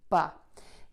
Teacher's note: put your lips together, ba, open them up, and your voice box is going to be on for that B sound, ba. Next, move to that short open vowel, that ah sound in English.